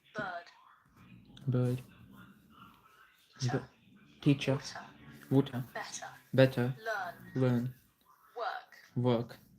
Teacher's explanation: So dropping off the R sounds where there's no vowel sound after the R